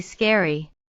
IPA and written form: ˋskɛrɪ (scary)